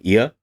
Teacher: the tongue starts at the front top of the mouth and moves towards the middle in this case it's just stays at the top and front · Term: old diphthongs